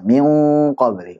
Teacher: Oh ini kalau ada nun sukun ketemu qaf nantinya namanya ikhfa hakiki. Cara bacanya siap-siap ke qaf, ditebalkan, kemudian dipanjangkan gunahnya.